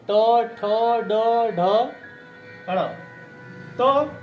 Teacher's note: देखिए जीभ मुड़ रही है, लेकिन तालु में नहीं छुलाना है, मोड़ के बोलना है।